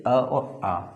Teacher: अ और आ कहाँ से बोले जा रहे हैं? कंठ से बोले जा रहे हैं।